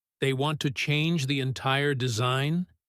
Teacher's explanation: He emphasized the words entire and change to show how big the problem was.